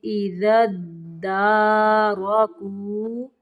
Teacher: دال کو دال کے اندر ملائیں گے